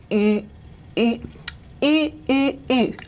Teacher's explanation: our rounded lips, but a palatal articulation